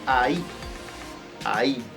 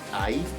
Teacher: Y por último tenemos el ahí, ahí, con acento en la i.